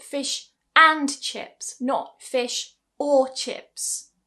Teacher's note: now I'm giving stress to and